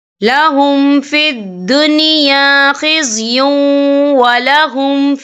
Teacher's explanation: واو جو ہے حروف یرملون میں سے ہے تو یہاں پر ادغام ہوگا، تو ہم اسے تھوڑا سا غنّے کے ساتھ پڑھیں گے